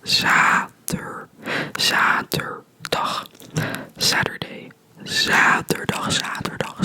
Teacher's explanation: there's only one T, so it's a longer A sound